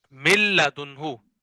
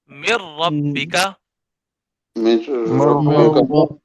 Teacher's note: باقی دو حروف لام اور را میں ادغام ہوگا، غنہ نہیں ہوگا